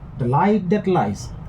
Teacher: the 2 words light and lies will be stressed. Now light and lies both contain only 1 syllable, so there is no doubt as to where the stress will fall.